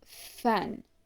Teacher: Next come the labiodentals, which are sounds made by the bottom lip touching the upper teeth. First we have f, a voiceless labiodental fricative, as in the word fan. A voiceless sound means that your vocal cords do not vibrate during the articulation of this consonant.